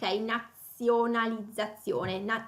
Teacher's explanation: È una Z sonora, le due Z, la Z doppia è sonora.